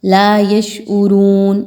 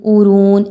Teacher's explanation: یشعرون، عین پیش عو، را پیش واو رو، عین کی حرکت کو حمزہ کی طرح نہیں پڑھنا، لا یشعرون، اورون ایسا کرنا بالکل بھی ٹھیک نہیں ہے، بلکہ عین کو واضح طور پر ادا کرنا ہے، لا یشعرون۔